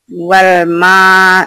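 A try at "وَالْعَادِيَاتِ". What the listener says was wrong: Ini ain wal a.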